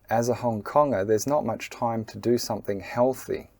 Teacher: You'll hear the word Konger and not and time are pronounced with a medium stress. You can call that a minor stress or a medium stress.